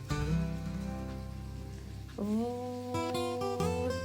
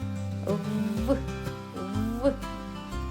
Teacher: Звук В. - приголосний дзвінкий. Коли ми його вимовляємо, губи стискаються, а повітря долає перешкоду.